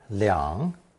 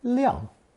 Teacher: To make a distinction, third tone leang was changed to fourth tone leang.